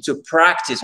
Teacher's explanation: Practice, l'accent tonique, ici, il est sur la première syllabe, c'est une exception.